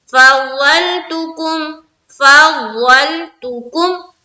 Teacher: दौद को मुंह भर कर बोलना है, दौद मोटे हर्फ में से है।